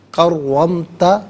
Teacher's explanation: را پر زبر ہے، را کو پر کر کے پڑھیں گے، مشدد ہے را، را کو جماؤ کے ساتھ پڑھیں گے